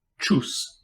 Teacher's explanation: It represents an unvoiced post-alveolar or alveolo-palatal affricate, like the CH in cheese.